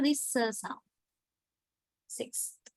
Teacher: Alveolar, sir is an alveolar sound, but it becomes dentalized when it occurs in front of a dental consonant because th is a dental consonant.